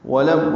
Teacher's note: واو ہونٹوں کی نا تمام گلائی سے ادا کریں گے